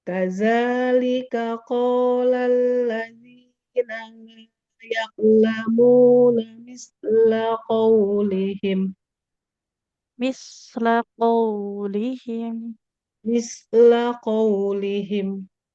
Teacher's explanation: misla huruf sifatnya rokhwah, mengalirkan suaranya jangan terlalu cepat